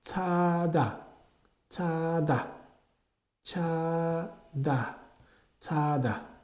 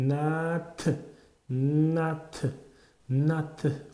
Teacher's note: bu harfimiz so'z boshida ch, so'z boshida ch, ikki unli orasida j, patsimda bo'lsa t o'qiladi.